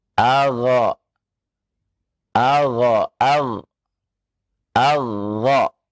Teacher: makhraj dari huruf ghain, yakni ya adna al-halaq, tenggorokan yang paling dekat atau tenggorokan atas